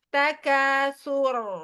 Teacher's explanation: Tapi sa-nya jangan tebal. Sa-nya tipis. Sur. Dimonyongin kan dia domah.